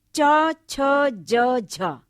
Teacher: जीवा का जो अग्र भाग होता है वो कोमल तालु का स्पर्श करता है, और इससे जो ध्वनियां निकलती हैं वो हैं च छ ज झ। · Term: तालवे